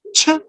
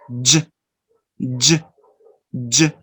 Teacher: Now let's pass to the second sound, that is the similar, almost the same, just the differences in the vibration again. Ch, no vibration. Now The same sound but with vibration. J, j, j. As you can see here, it's a combination again of two sounds.